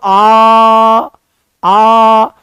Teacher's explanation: आ बोलो, आ तो पीछे जीभ के पिछले हिस्से में महसूस होता है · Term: पश्च स्वर